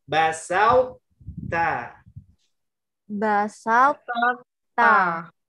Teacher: Jangan basat, seolah-olah to-nya hilang karena to huruf tebal dia tidak mau mengalah. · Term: idgham mutajanisain